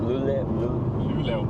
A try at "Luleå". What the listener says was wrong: Most people don't say the O in the end. We just say Luleå. Luleå.